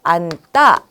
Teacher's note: 어간의 받침이 니은으로 발음됩니다. 그러니 어미의 첫소리, 예사소리가 된소리로 바뀌는 것이죠.